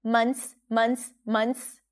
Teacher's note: notice how we dropped the th here. You don't have to pronounce it.